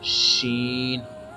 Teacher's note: The source of sheen is the middle of tongue and by the touching middle of tongue with the middle of palate.